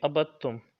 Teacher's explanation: یعنی کہ دال کو چھوڑ دیں گے اور با کو تا کے ساتھ ملائیں گے